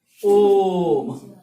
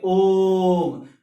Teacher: प्लतु स्वर जैसे हम कहें ओम, तो ये जो है हमारा वो 3 मात्राओं का समय लेता है, 3 और 3 6, तो हम बोलेंगे ओम।